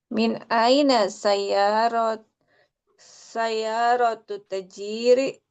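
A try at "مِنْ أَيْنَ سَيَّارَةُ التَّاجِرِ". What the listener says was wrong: Ini ini panjang. Kenapa? Karena setelah ta ada alif. Ada alif ismin that we have to read longer to haroka. Tajiri sayyaratu tajiri. Konsep mudhof ilaih. Oke, min aina sayyaratu tajiri.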